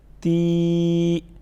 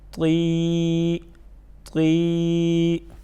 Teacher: تا کو عموماً طا کی نسبت جو ہے وہ باریک پڑھی جاتی ہیں اور طا کو موٹا پڑھا جاتا ہے